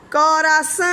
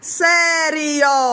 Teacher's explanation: Porque é uma palavra nasal, preste atenção, não sai pela boca, sai pelo nariz. Coração, bote a mão aí no nariz.